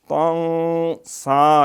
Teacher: یہ سین جو ہے سیٹی کے ساتھ باریک